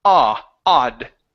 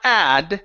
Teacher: we don't want to go wide. We want to go open, drop the jaw down. Okay, not a wide mouth, but the jaw coming down.